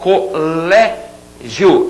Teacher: Colégio, vamos considerar aquele final iô, né? Falando rapidinho, como um ditongo.